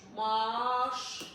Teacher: Eyni cinsələrdə bir dənə qayda var. Saitin biri düşür, digəri uzanır.